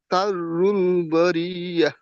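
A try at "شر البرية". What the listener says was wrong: জি, বারিয়াটা পড়ার সময় ইয়ার উপরে বেশিক্ষণ থাকবেন না, বারিয়া। জি, শাররুল বারিয়া।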